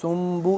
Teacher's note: میم ساکن کے بعد جب با آ جائے تو اس پہ اخفا لازمی کرتے ہیں